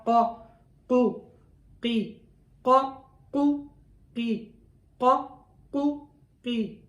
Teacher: قاف موٹا حرف ہے، اس کے نیچے زیر آ گئی ہے تو یہ زبر اور پیش کی حالت میں تھوڑا زیادہ موٹا ہوتا ہے. زیر کی حالت میں اس کی موٹائی میں تھوڑا فرق آ جاتا ہے تو ذرا کم موٹا ہوتا ہے، اتنا موٹا نہیں ہوتا جتنا قا قو قی قا قو قی قا قو قی.